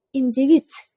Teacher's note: D talaffuzda so'zni oxirida t ga almashar ekan. Mana individ so'zida ko'rdik.